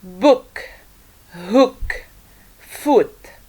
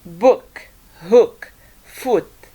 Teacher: this is a relaxed vowel sound where the muscles in the mouth including the tongue are somehow relaxed while pronouncing this vowel